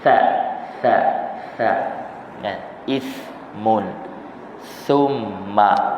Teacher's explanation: Holokkan lidah kita. Lidah kita ke hadapan sedikit. Berlebihan daripada gigi. Jangan duduk di belakang gigi. Kalau duduk di belakang gigi maka dia akan jadi sin. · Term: huruf sa